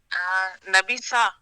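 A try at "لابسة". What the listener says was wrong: نبی نہیں لا لا لام سے لابسہ.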